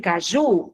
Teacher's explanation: A sílaba tônica de caju é ju.